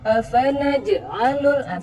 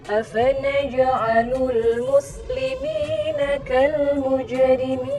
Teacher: Jimnya ini sukun dan tandanya itu adalah qalqalah. Nah, jadi bacanya jangan seperti ada sakta.